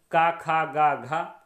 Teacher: का वर्ग कंठ से उच्चारित होता है